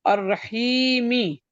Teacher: را پہ زبر ہے تو یہ مفخم پڑھا جائے گا